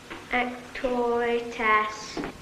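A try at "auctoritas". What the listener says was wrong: Not ass. Arse. Lord knows you should be able to pronounce that.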